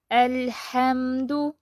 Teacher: اب لام ساکن جو ہے اس کو ہم درمیانی کیفیت سے پڑھیں گے، نہ آواز چلتی رہے گی نہ آواز بند ہو جائے گی